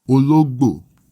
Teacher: It has a middle tone, then a high tone, then a low tone.